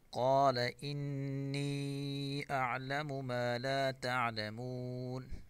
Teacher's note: قال انی اعلم ما لا تعلمون، قاف کو پر پڑھیں گے، نون مشدد غنہ سے پڑھیں گے